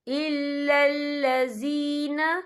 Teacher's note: یا ساکن سے پہلے زیر ہے تو ہم یہاں 2 یا 3 حرکت کے برابر کھینچیں گے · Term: یا مدہ